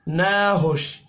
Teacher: अल्लम मीम साकिन के बाद नून है, इजहार शफ़ी होगा, गुन्ना नहीं होगा। नाहुश नून के ऊपर खड़ी ज़बर है, एक अलिफ के बराबर खींच कर पढ़ेंगे